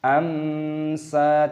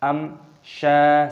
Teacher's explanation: Pertemuan mim sukun dengan syin, aturannya dibaca sebagai izhar syafawi, dibaca dengan jelas, jangan dibaca dengan gumaman. Amsa tidak diperbolehkan , kita harus membacanya dengan jelas. · mim sukun bertemu dengan shin, hukumnya dibaca idhar syafawi, dibaca jelas, jangan kita baca berdengung.